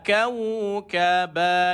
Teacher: Angin memang keluar sikit. Sebab sifat huruf kaf, sifat dia hamas. Angin dikeluarkan.